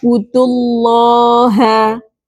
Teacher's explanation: lafaz Allahnya juga dibaca tebal karena sebelumnya ada huruf berharakat domah · Nah, tapi berhubung ini bertemu dengan hamzah wasal maka tidak dianggap ya madnya ya wudu seharusnya mad thabi'i karena ada wau sukun didahului oleh dhamah. Nah, berhubung ini langsung disambung dengan hamzah wasal, maka madnya tidak dianggap